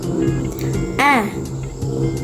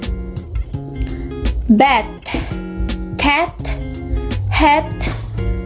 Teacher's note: This sound is low, front, and unrounded vowel sound. It's often described as a short A sound.